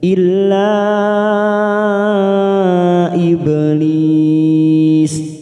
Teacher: ada huruf ba sukun, qalqalah sugro, karena mati di tengah kalimat jangan lupa dipantulkan